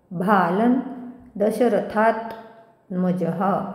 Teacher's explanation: विसर्ग आल्यामुळे ह होईल जह. नंतर थावर पुन्हा समोर जोडाक्षर असल्यामुळे आघात येईल.